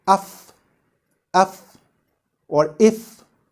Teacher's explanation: Then we would conclude that the makhraj of fa is between the mid of our lower lip and the edge of our upper incisors